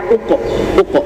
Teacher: Kalau huruf qof bertanda sukun, dia pantulannya juga tebal